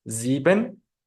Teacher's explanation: letra s se pronunciará como una fricativa alveolar sonora es decir dejaremos salir el aire mientras lo estamos friccionando con la punta de la lengua contra el alveolo y a la vez estamos haciendo vibrar las cuerdas vocales que corresponde con el sonido del alfabeto fonético internacional representado por